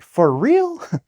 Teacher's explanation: That's how I say it, that's my intonation. I always go up like, "For real?" Okay?